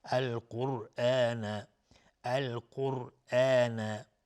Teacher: الف لام قمری القرآن قاف از حروف استعلاء غلیظ طرف میشه را هم اینجا ساکنه قبل ضمه بوده حکمش استعلاء است